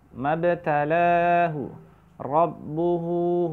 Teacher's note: Mabtalahu, rabbuhu, hu-nya dipanjangkan di sini ya. Tidak rabbuhu pendek, tapi rabbuhu dua harokat ya